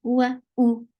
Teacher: Hamza is very sharp and short here because we are not pronouncing wow.